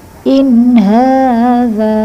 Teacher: in pendek jelas, hadza panjang semua dua-duanya. Ini karena fathahnya seperti ini, tegak lurus, kemudian za ini ada fathah depannya alif, in hadza, dua ketukan.